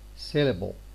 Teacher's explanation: The L here tends to be dark, and it is at the same time syllabic, because it's the most important bit of the syllable